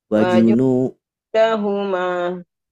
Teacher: Ma-nya hanya 2 harakat saja. Karena ini mad asli. Tidak boleh lebih dari 2 harakat.